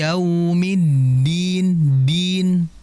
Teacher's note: Dal itu jahar, nggak boleh ada desisan atau udara yang keluar.